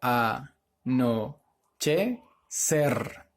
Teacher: su mayor fuerza de voz en la última sílaba por lo tanto es una palabra aguda pero termina en r